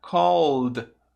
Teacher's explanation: O som do ED vai virar um som de D. Então vai ficar called.